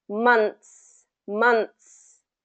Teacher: kind of having a t sound instead of the th sound